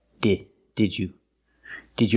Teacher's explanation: pronounce the first d as a real d d d DJ the second D changes to the J sound like juice and jump